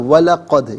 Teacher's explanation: دال ساکن تو ہے لیکن دال حرف قلقلہ ہے، تو آواز لوٹتی بھی محسوس ہونی چاہیے